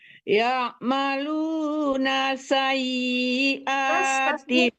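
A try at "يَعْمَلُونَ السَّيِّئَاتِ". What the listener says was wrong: Tasdik sinnya belum ke bawah. Sayyi'ah. Tasdik sinnya belum ke bawah.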